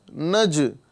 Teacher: نج یہ جیم جو پلٹ رہا ہے اسی کو قلقلہ کہتے ہیں